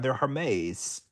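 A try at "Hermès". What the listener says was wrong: Isn't the isn't the H silent like Hermes?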